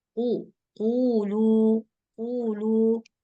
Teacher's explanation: Qaf berbaris dhammah, kemudian setelah qaf berbaris dhammah ada huruf waw sukun. Nah, jadi dibaca panjang. Qulu, 2 harkat. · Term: mat asli